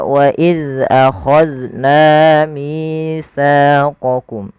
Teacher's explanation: pada lafal na, kemudian mi, sa, ketiga kata ini wajib dipanjangkan 2 harakat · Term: mad tabi'i